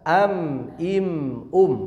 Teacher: Untuk idhar, masih ingat idhar itu baca jelas bunyi mim sakinahnya sesuai makhraj sifatnya. Dan mim sakinah yang secara sifat adalah at-tawassut, mengalir sedikit ya.